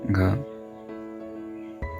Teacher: सघोष महाप्राण ध्वनि है